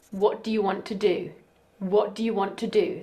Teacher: the first is unstressed the second is stressed